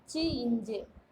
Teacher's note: நாவின் இடைப்பகுதி நடு அன்னத்தின் இடைப்பகுதியை பொருந்துவதால் பிறப்பவை